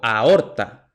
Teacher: la a y la o se pronuncian en sílabas distintas es un hiato